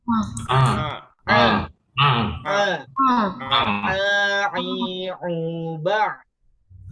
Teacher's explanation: a ini keluarnya dari tenggorokan tengah